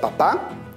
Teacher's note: está dentro del grupo de las palabras agudas porque la mayor fuerza de voz se encuentra en la última sílaba le pongo o no le pongo tilde le pongo tilde porque